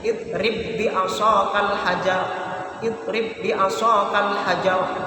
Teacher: Maka di sini seakan-akan ditasydid karena ini idgham mutamatsilain. Ditasydid, dimasukkan ba yang mati ke ba yang selanjutnya atau ditasydid. Cara bacanya menjadi idrib bi asaqal hajar.